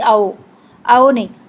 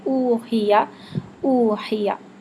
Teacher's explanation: او کے لیے مکمل ہونٹ گول ہوں گے اور چونچ کی طرح ہونٹ مکمل آگے باہر آئیں گے